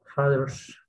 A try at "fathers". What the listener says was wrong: No, no es una D. El sonido de la D es distinta. Si yo pronunciase con la D sería así, mira. Father, father, father, father. Suena raro, father, como que muy, muy español, ¿cierto? Muy peruano. Father. Ahora yo voy a hacer el truco de la lengua entre dientes. Father, father. ¿Ya suena más agringado o no? Father.